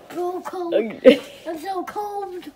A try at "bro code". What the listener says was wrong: Not cold. Code.